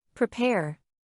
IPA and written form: prɪˈpɛr (Prepare)